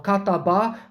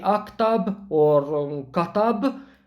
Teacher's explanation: also for the conjugation the final sound for example or kataba this final ah or whatever they are simply drops or we say aktab or katab and not the final vowel